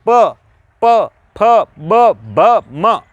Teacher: आपके होठ बंद हो रहे हैं। ठीक है दोस्तों, तो ये प वर्ग है, इसको हम इसका उच्चारण स्थान ज्ञात करेंगे, तब उच्चारण स्थान इसका ओष्ठ आएगा। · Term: ओष्ठ्य